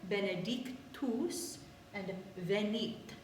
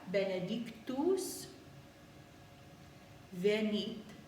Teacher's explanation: in Latin, T's are dentalized. That means that they don't have that explosive t sound. Instead, they are a little bit softer.